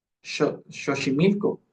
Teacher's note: Eh, les comento esto porque cuando una palabra en el español de Andalucía, cuando una palabra llevaba la letra X, no se pronunciaba la X como hoy en día nosotros lo pronunciamos, sino que se pronunciaba como una sh